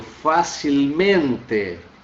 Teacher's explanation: ele não altera a pronúncia, ele não altera a sílaba tônica, que é no mente